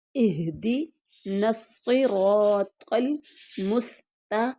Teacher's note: اہدنا الصراط، عربی کی طرف پہلے آئیے، اہدی، یہ ہا جو ہے یہ بھاری آواز ہے، یعنی یوں جیسے حروف حلقی 6 ہے، حمزہ ہا، حمزہ ہا سب سے نیچے والے حرف حلق سے یہ نکلے گی، اہدی الصراط المستقیم، ہمیں سیدھی اور سچی راہ دکھا دے، ہمیں سیدھی اور سچی راہ دکھا دے۔